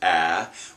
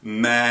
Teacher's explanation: can be open a little bit for vowels so for example in the word man it can be a nasalized A or it could be purely oral man when I plug and unplug and it doesn't change it's